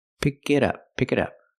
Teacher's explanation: we hear the T and it sound like a fast D